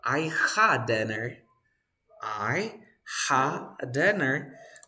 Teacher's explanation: When you have the same sound, I had dinner, you drop the first sound.